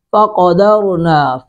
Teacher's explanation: قوف کو پر کریں گے، را کو پر کریں گے